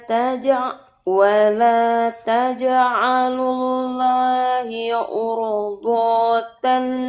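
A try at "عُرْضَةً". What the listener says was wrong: Urdo, donya dipendekkan, jangan ditebelin. Do, urdatan, ulangin.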